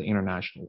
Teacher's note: I don't pronounce the T sound